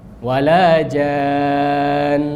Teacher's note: Gunnah atau dengung adalah suara tipis, ya, sautun ladhiz, khafif, suara tipis dan lembut yang keluar dari pangkal hidung, ya, al-khayshum, dan merupakan sifat yang selalu melekat pada huruf mim dan nun.